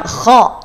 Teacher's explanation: pangkal lidah naik menyentuh langit-langit qo qo qo qo bukan ko kalau k dia bukan di Pangkal tapi di ujung tenggorokan